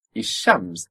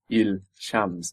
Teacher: So, before sh, the L will also assimilate. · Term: L assimilating